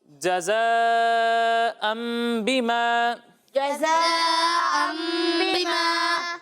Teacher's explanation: مد متصل کو 2 یا 2.5 الف کے برابر کھینچنا ہے